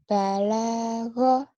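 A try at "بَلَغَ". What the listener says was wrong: Nggak ada yang panjang. Belagu, ini balago. Belagu, balago.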